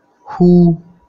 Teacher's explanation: These are the sounds which are articulated from the glottis region, and this is the H sound, that is like in who. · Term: glottal sounds